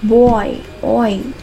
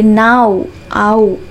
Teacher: These are the double sounds that glide from one vowel to another. Diphthongs are nothing but it will take the 2 vowels sounds అనేవి తీసుకుంటుంది అనమాట.